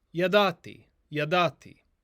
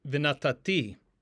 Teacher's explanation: when we add the vav to this suffix conjugation form, the stress will shift to the ultima, that is to say the final syllable